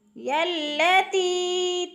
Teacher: تی پہ بھی مد ہے، مد متصل 6 حرکات کے برابر کھینچ کر پڑھنا ہے